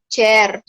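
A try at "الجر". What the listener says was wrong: Bukan jer, itu jer Jawa itu. Al-jarru. Itu jer orang Pare itu, orang Kediri.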